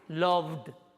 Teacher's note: Si yo tengo un verbo como love, que termina, love, que termina en consonante sonora, su pasado, el alomorfo del pasado es una D